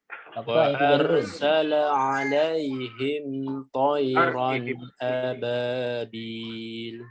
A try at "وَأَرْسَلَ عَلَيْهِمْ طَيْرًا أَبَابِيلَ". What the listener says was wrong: Ro-nya boleh ditebalkan lagi. Wa'ar. Ya. Karena kondisinya tafkim sini ya. Wa'arsala.